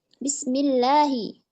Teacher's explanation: Yang mana dia itu ketika ibtidak dari hamzah wasal tersebut dia diberi harokat fathah. Nah, kalau dia itu bersambung, hamzah wasalnya itu hilang. Jadi tidak dianggap gitu. Tertulis tapi tidak terbaca gitu.